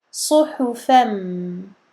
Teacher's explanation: Donc le sad, as-sad doit rester mufakhamah, puis ha muraqqaqa. Donc sad emphatique, ha aminci.